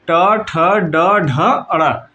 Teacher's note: ड ढ अड़ ये जो है आपके कौन से होते हैं, मूर्धन्य व्यंजन होते हैं।